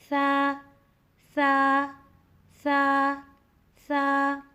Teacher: سا کی ادائیگی میں زبان کی نوک کو سامنے والے اوپر والے 2 دانتوں کے اندرونی کناروں سے لگا کر نرمی سے پڑھنا ہے، آواز باریک ہوگی۔